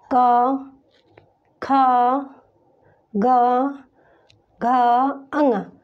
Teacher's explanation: इसका उच्चारण करने में हमारे मुख से जो वायु टकरा रही है, हमारी ये आवाज़ जो निकल रही है या जो ध्वनि हम उच्चारित कर रहे हैं वो हमारे कंठ से उच्चारित होके आ रही है, तो ये हमारा कंठ से हो जाएगा। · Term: क वर्ग